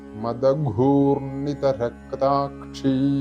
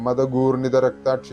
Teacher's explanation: ഘ തൊണ്ട ചേർത്തുകൊണ്ട് ഉച്ചരിക്കേണ്ട ഘയാണ് ഇവിടും വെറും മതഗൂർണിത രക്താക്ഷി എന്ന് ചൊല്ലിയതുകൊണ്ടായില്ല ഘ എന്നുള്ളത് കേൾക്കണം ഘോഷ ശബ്ദമാണ് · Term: മഹാപ്രാണനാണ്